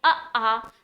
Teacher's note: अब अगर हम बात करें उच्चारण स्थान के आधार पर, तो अगर आप बोलेंगे आ, तो आप पाएंगे आपके कंठ पर प्रेशर है, इसीलिए आ का उच्चारण स्थान कंठ होता है।